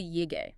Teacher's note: The rule was that yay is first toned by itself, but it changes to a fourth tone before a first, second, or third tone, and effectively before a neutral tone as well. And since D is neutral, Yi would become the fourth tone, so you'd say yay.